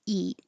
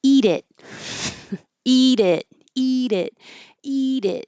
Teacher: Eat is your tongue's very high and pushing towards the front, eat. And it is more relaxed in the middle.